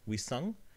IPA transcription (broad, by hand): wisʌŋ